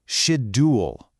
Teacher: some speakers use a very crisp d sound. It sounds like shed-yool. You make that sound with the tip of your tongue. But others soften it up into more of a j sound, like in the word just.